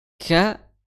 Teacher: Makhraj huruf kaf itu adalah di perbatasan antara langit-langit yang keras dan langit-langit yang lunak